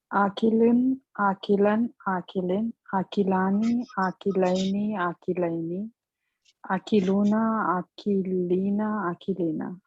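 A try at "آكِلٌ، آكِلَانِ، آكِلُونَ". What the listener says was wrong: Good, excellent.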